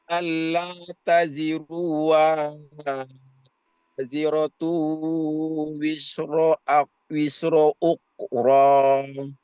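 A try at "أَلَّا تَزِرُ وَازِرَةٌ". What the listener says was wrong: Sekali lagi Pak Haji, Allah taziruwa, yang dibaca panjang wanya, u-nya pendek. Allah taziruwa.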